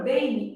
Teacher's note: Na palavra bem, eu tenho um e funcionando como vogal e um i funcionando como semivogal, mesmo que ele esteja representado pela letra M. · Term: ditongo fonético